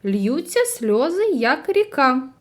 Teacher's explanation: у рядку сім складів із них наголошені перший третій п'ятий та сьомий а не наголошені другий четвертий та шостий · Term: ритм